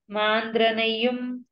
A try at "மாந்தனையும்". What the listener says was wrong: మాందనయం మాంద్ర కాదు మాందనయం